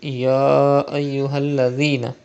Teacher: You can see Hamza after Khada Zabar in the next word. It is Madde Munfasil. You have to stretch up to 5 harakat.